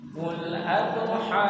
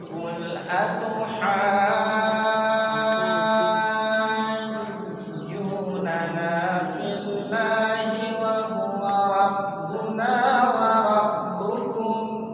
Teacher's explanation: Jangan terburu-buru menghidupkan tasdid, tapi ditahan sedikit. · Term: mad lazim